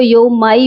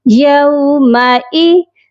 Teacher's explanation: مائی نہیں پڑھا جائے گا، حمزہ کا ساؤنڈ آپ کا بالکل کلیئر ہونا چاہیے